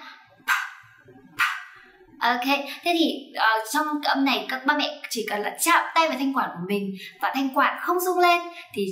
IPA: p